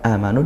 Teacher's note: amanu dibaca panjang ya satu Alif atau dua harakat